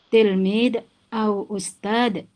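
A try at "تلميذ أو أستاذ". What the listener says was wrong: Cuman harus dibedakan antara huruf za dengan dal. Ini huruf za ada titiknya, tidak qalqalah. Tilmiz dan ustaz. Berbeda kalau huruf dal. Ahad itu ada qalqalah.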